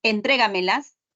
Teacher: llevan la mayor fuerza de voz en otra sílaba, en la tras antepenúltima sílaba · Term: sobresdrújulas